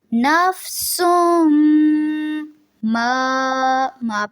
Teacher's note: نفسم سین کی جو دو پیش ہیں اس کو میم سے ملانا ہے. غنہ ہوگا میم مشدد پہ